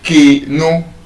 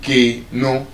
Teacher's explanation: And now, what it now means is that when we say key no, you observe your your pitch goes up in that first syllable